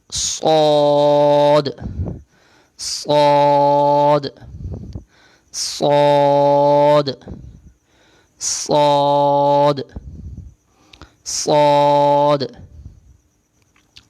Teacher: صاد کا مخرج وہی جو زا اور سین کا ہم پڑھ کے آئے ہیں، یعنی زبان کا کنارہ اوپر اور نیچے والے دانتوں کے کنارے سے، زبان کی نوک اوپر اور نیچے والے دانتوں کے کنارے سے. صاد اور سین دونوں کی آواز ایک جیسی ہوتی ہے، لیکن اس میں فرق یہ ہے صاد جو ہے وہ موٹا ادا ہوتا ہے. یہ موٹے حروف میں شامل ہے.